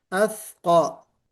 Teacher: موٹا پڑھیں گے، جی، کیوں؟ وہ مستعلیہ میں سے ہے